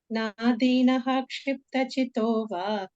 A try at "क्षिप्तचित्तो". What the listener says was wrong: double त चितो नो चित्तो